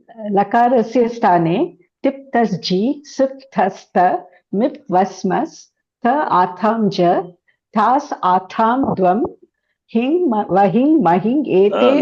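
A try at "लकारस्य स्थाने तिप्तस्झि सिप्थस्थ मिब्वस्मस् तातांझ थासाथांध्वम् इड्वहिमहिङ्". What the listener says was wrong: Not ing. It is. It, not ing. Where is the dot? On the right side.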